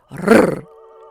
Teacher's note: c'est la pointe de la langue qui vibre contre les alvéoles, produisant le R italien bien connu des chanteurs, rrr, qu'il utilise même en français où il n'existe pas. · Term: R roulé